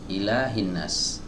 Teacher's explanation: Huruf hamzah ini adalah huruf yang dikeluarkan dari pita suara ya atau di tenggorokan bagian bawah ya. Di sebagian kitab-kitab tajwid disebutkan tenggorokan yang paling jauh.